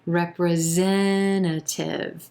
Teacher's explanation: here we have five syllables and the emphasis is on the third syllable representative it's the e as in red vowel sound and that